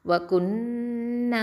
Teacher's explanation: இந்த நூனில் என்ன இருக்குது அக்மல் குன்னா கொடுத்து ஓதணும்